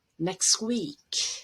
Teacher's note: you already have three consonants together next week so it would be fairly common to drop the t there